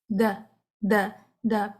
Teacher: یہاں پہ بھی دال میں بھی جس طرح آپ نے تا کے ساتھ کیا، سانس کو ساتھ جاری نہیں کرنا